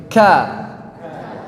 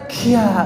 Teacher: Kalau gerakan lambat ada udara yang berhembus saat mengucapkan kafnya.